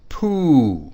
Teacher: notice the tone falls from high to low pitch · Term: high tone